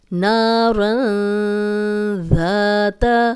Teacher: ذال کو ہم نرم پڑھیں گے، سیٹی کی آواز نہیں آئے گی